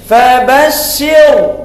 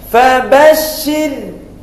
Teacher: Fabashshir kalau baris bawah sebelum ra mati maka dia nipis, dinamakan tarqiq. Jangan kita baca macam ni fabashshir, salah.